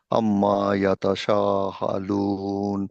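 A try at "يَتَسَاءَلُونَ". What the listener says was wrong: ইয়াতা শাহ না, ইয়াতা সা।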